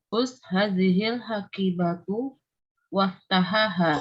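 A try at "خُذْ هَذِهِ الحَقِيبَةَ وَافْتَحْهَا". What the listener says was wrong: Khudh hadhil haqibata. Waftahha. Kan sukun. Waftahha.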